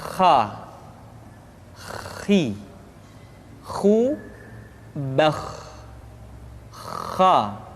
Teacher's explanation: pengucapan huruf kha persis terdengar seperti orang yang tidur dalam keadaan mengorok.